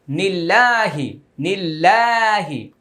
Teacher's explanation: আল্লাহ শব্দের পূর্বে জের আসছে, এখন উচ্চারণ পাতলা হয়ে যাবে। নিল্ল মোটা হবে না, নিল্লা পাতলা হবে।